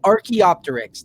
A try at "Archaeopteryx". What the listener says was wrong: Are you sure that you pronounced that P there? You sure you pronounced the P? Are you sure it's not just Archaeopteryx? Because you don't say pteranodon.